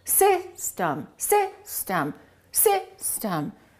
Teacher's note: We don't say system, we say system. The first syllable is stressed, the second syllable is reduced. So if I take my rubber band, system, two syllables, watch. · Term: reduced vowel